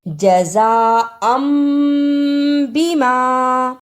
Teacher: تنوین کی آواز کو میم سے بدل کر پڑھنا ہے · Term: اقلاب